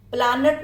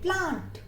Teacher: प्लानट नहीं बोलेंगे, we call it प्लांट. ए को आ कर दिया और न को हाफ कर दिया.